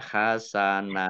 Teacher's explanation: Hasanan dibaca hasana, panjang 2 harokat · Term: mat iwad